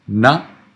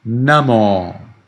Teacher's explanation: So Namo, the first one is short, the second one is long. Na-mo. When you write it, you write them as short, Namo, but that's not how you read it.